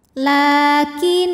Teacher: Cara membacanya, kita panjangkan lamnya ini 2 harokat saja. Lakinil, lam pada lafaz Allah atau lam jalalah dibunyikan secara tarqiq, sebab huruf sebelumnya berbaris kasroh. Maka dibacanya tipis, lah pangkal lidah datar.